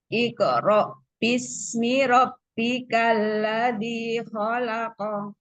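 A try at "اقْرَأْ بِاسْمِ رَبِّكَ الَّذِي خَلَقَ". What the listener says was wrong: Zal itu makhrajnya lepas tuh. Zal. Alladzi rabbika. Bisminya ada punya asofir. Bismi rabbika. Tasdid ba rabbikal ladzi. Zal. Dzadzi. Rabbikal ladzi.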